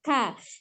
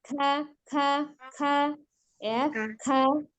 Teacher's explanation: Sifatnya al-hams, ada udara yang mengalir ketika mengucapkan huruf kaf. K ya, tetapi tidak takalluf atau berlebihan karena mengalirnya udara.